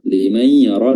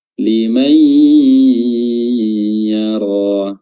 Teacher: Jadi nunnya tidak disebutkan namun dileburkan ke huruf ya sehingga huruf ya-nya bertasydid disertai dengan gunnah atau suara dengung yang keluar dari al-khayshum atau kedua rongga hidung. Liman yara, dan juga diberikan sedikit durasi untuk lebih memudahkan penyebutan gunnahnya. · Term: idgham bi gunnah